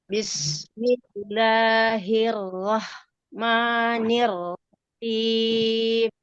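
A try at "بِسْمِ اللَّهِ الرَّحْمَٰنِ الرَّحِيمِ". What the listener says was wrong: Nirrahim. Rohnya tebal. Nirrahim.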